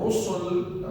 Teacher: Ra has Dhamma, so it is thick. Rasul also Ra has Fatha, it is also going to be thick.